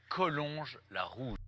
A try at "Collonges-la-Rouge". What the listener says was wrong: Collonges. Oops, you pronounced the G. Collonges.